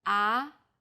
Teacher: the second tone starts with the middle pitch then Rises quickly